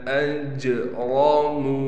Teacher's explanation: جیم پر قلقلہ کیا جائے گا، را کو موٹا کر کے پڑھیں گے، میم کے بعد واو مدہ ہونے کی وجہ سے میم کو ایک الف کی مقدار کھینچیں گے۔